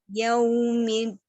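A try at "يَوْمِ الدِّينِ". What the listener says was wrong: Masih putus. Yaumiddin.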